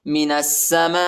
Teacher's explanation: نون کو سین کے ساتھ ملائیں گے، الف اور لام نہیں پڑھا جاتا، سین کو شدت کے ساتھ پڑھنا ہے